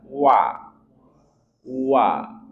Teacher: wa, dia makhrajnya dari dua mulut yang kita monyongkan.